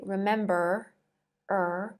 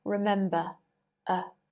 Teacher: in received pronunciation if a word ends with r the r is not pronounced